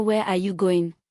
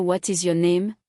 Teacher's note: WH questions have falling intonation because they expect a detailed answer, not a yes/no.